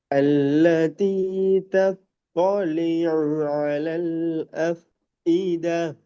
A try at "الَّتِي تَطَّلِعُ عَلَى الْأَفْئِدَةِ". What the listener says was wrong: எஃப் இதா என்று தால நிப்பாட்டக்கூடாது. பெரிய ஹால நிப்பாட்டணும். எஃப் இத என்று கடைசி போகணுமா. ஹார்டா நீங்க உச்சரிக்கிறீங்கிறது வெளிப்படுத்தப்படணும் சவுண்ட்ல.